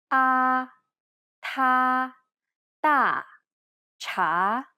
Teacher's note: almost identical to the a sound in the word father except the tongue is in more of a neutral position